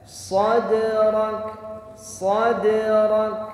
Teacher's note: huruf Kaf itu punya sifat hams dan juga punya sifat syiddah mengalir Sua nafas tetapi suaranya tertahan nafasnya ngalir tapi suaranya tertahan